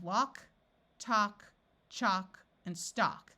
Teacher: in all these words the a has its broad sound of a and the L is silent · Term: broad sound of ah